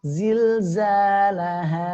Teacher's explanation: pengucapannya adalah ha pangkal tenggorokan